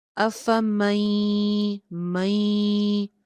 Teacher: افمن یمشی، افمن یمشی، نون ساکن ہے، نون ساکن کے بعد نیکسٹ لیٹر جو ہے وہ یا ہے، یرملون میں سے یا ہے، تو پھر یہاں پہ کیا ہو رہا ہے، نون کی آواز بہت ہی معمولی سی باقی رہ رہی ہے اور یا کے ساتھ جو ہے اس کو مرج کر رہے ہیں